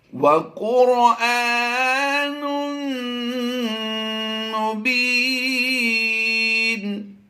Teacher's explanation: تنوین کے بعد حروف یرملون میں سے میم آ گیا تو یہاں پر ادغام مع الغنہ کا قاعدہ کرتے ہوئے غنہ کریں گے